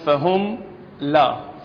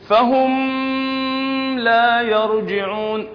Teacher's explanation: الميم الساكنه مع اللام حكمها الإظهار، يجب أن تقرأ مظهرة بدون غنة زائدة